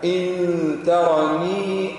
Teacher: اخفي النون مع الغنة لأن بعدها تاء